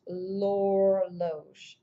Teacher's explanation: notice how the H is silent and my L sound just carries on to the O